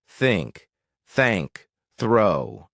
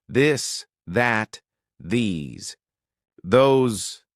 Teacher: Voiceless like in think and voiced like in this.